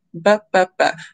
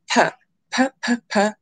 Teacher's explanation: It's just one is voiced and one is unvoiced, which basically means one's adding the vibration, b, b, p, p, whereas one is not.